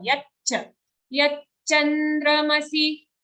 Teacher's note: Don't say yachandra. If you say yachandra, it sounds like there's only a single cha sound. But as you can see here, it's a double cha.